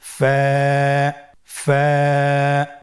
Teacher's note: ফায়ের মাখরাজ হলো নিচের ঠোঁটের প্যাড সামনের উপরের দুই দাঁতের আগার সঙ্গে লাগিয়ে উচ্চারিত হয়। · ফা হরফটি উচ্চারণের ক্ষেত্রে বারিক হবে এবং এক আলিফ টেনে পড়তে হবে